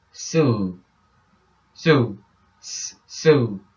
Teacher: There's no vibration in the S because the vocal cords are relaxed and separated.